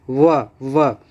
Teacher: व में जो है होंठ मतलब दांत का भी और होंठ का भी दोनों का प्रयोग होता है। और क्या होता है, होंठ कुछ मुड़ता हुआ प्रतीत होता है वा के उच्चारण में।